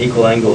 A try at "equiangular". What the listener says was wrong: Equiangular. Not equal angular, equiangular. So you can either put A for angular or an angle, but there's no L in it. The L in here is from the word lateral.